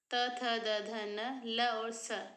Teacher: त थ द ध न, ल और स, इनका उच्चारण स्थान है दंत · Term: दंत वर्ण